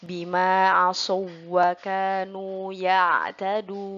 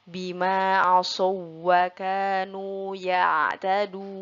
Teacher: wawunya tidak perlu kita dengungkan, tetapi kita tasydidkan. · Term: waw bertasydid tidak dibaca dengung